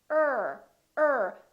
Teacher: the tip of the tongue curls and we pull it back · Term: American are